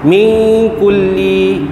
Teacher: nun mati bertemu dengan kaf, ikhfa hakiki ya, dengung 2 harakat.